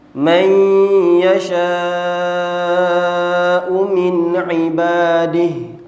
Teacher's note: ولكن الله يمن على من يشاء من عباده Man yasha' tu mak wajib muttasil, panjangnya kalau baca seterus mesti 4 ataupun 5 harakat